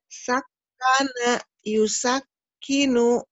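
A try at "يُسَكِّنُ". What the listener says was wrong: Betul, cuman kurang alir sedikit kafnya, Kak.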